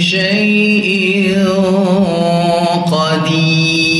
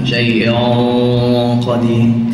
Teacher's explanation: ولله ملك السماوات والأرض والله على كل شيء قدير Dekat sini pun sama, kena tebalkan qaf tadi sekadar yang kita boleh. Jangan lebih-lebih pula.